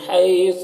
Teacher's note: حی میں یالین ہے، اس یالین کو نرم آواز کے ساتھ جلد پڑھیں گے۔